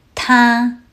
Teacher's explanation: 他 uses the first tone. The first tone stays high and level. Think of it as a steady, flat note.